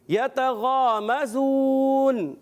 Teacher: غین حرف مستعلیہ میں سے ہے، موٹے حروف میں سے موٹا کرنا ہے، مگر اتنا موٹا نہیں کرتے، بعض غین اور خا کو بہت موٹا کر دیتے ہیں۔